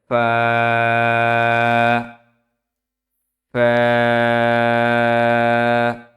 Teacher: নিচের ঠোঁটের পেট সামনের উপরের দুই দাঁতের আগার সঙ্গে লাগিয়ে উচ্চারিত হয়